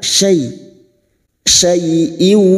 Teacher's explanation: fathah bertemu Ya Sukun kita lunakkan